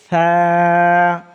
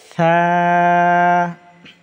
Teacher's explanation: নরম, জিহ্বার আগা সামনের উপরে দুই দাঁতের আগার সঙ্গে লাগাইয়া